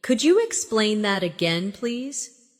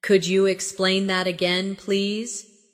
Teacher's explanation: Could you sounds like could ya, naturally.